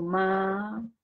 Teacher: Y cuando me preguntan qué clase de palabra es, yo digo, pues es una palabra grave, porque lleva la mayor fuerza de voz, no en la última, sino en la penúltima sílaba